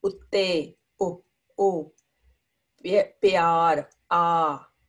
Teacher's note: wherever there's independent matra, you only hear the vowel sound, not a consonant